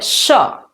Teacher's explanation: केवल तालु आ रहा है, ना आपका दांत आ रहा है, ना आपकी राउंड कर रहे हो दंतालु, ये सब कुछ नहीं हो रहा है, केवल तालु आ रहा है।